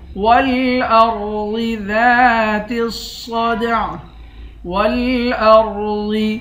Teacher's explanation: ذات الصدع، والارض، را اور ضاد دونوں کو موٹا پڑھیں گے، ذال کے بعد الف ہے، الف حروف مدہ ہے، اس کو ایک الف کی مقدار کھینچ کر پڑھیں